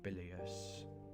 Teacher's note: with the stress on the first syllable